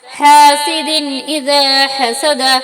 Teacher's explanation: یہاں دو زیر کی تنوین کے بعد حروف حلقے میں سے حمزہ آیا ہے، اس لیے تنوین کو ظاہر کر کے بلا غنہ کے جلدی پڑھیں گے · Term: اظہار